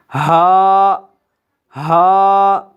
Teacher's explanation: ہا انتہائی حلق سے ادا ہوگا، یعنی حلق کا وہ حصہ جو سینے کی طرف ہے، ہا کی آواز وہاں سے نکلے گی۔